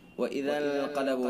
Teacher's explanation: وَإِذَا انقلبوا، نون ساکن ہے، نون ساکن کے بعد اخفاء کے 15 حروف میں سے قاف ہے، لہذا اخفاء حقیقی ہوگا. غنہ کے ساتھ خیشیوں سے ادا کریں گے.